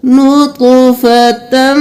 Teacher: اب یہاں پہ ہم تا کو میم کے ساتھ ملائیں گے اور پھر یہ ہو گیا ادغام مع الغنہ. غنہ کے ساتھ ہم تا کو میم میں مدغم کریں گے نطفتم. اب یہاں پہ من منیج نہیں کرنا, میم کو میم کے ساتھ ملائیں گے.